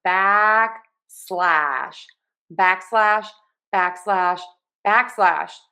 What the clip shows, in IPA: ˈbæk.slæʃ